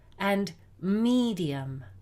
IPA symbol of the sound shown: i: